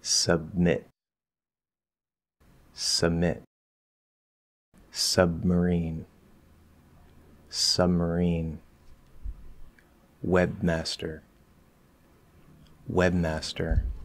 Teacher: if you are enunciating very clearly, don't drop the B.